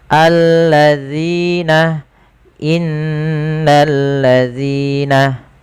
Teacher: Hati-hati agar sempurna dalam pelafalan zal ujung lidah tempelkan dengan gigi seri atas.